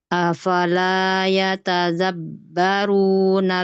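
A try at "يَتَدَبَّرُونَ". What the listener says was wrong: Dal biasa ya tadabbaru.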